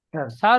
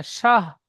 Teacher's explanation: তালু থেকে উচ্চারিত হয় শিন।